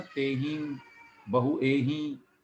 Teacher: अनुस्वार का उच्चारण लिखा गया है नासिका अनुस्वारस्य, अर्थात नाक से उसका उच्चारण होगा